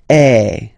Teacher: if you combine this uh vowel a with the vowel e okay you will get the sound e so really open E